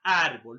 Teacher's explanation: La mayor fuerza de voz está en la penúltima sílaba. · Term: graves o paroxítonas